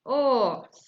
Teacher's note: it's a back vowel and it's in half open position